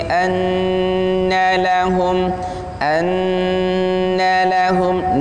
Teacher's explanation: nunnya ditasydid berarti di sana ada gunnah, dengung, dan dengung itu panjangnya 2 harokat